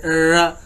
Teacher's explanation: Post alveolar, उससे भी आगे। टंग curl behind the alveolar ridge, जैसे र, जो जुबान है दरम्यान में थोड़ी सी कर्ल हो जाती है, थोड़ी सी बेंड हो जाती है, जैसे रोल होती है ना, तो ऊपर जाके टच करती है एल्वियोलर रिज की ऊपर वाली जानिब।